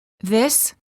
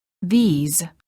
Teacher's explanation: the word this is singular and is pronounced with the short I sound and a s the word these is plural and is pronounced with a long vowel e and a z sound